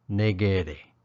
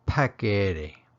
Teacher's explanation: now did you notice I used the harder aspirated K sound